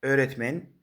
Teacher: Siz gʻ harfini tushirib qoldiring. Undan oldingi nuqtali o harfini esa 1 yarim ta unli harf uzunligida ayting. · Nuqt o yoki nuqtali u harfini esa bir yarimta unli uzunligida choʻzib aytishingiz kerak.